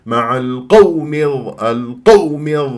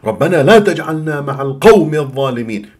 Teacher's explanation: ركز لي على واو اللين في كلمه القوم ساكنه قبلها مفتوح ما تنبر لي اياها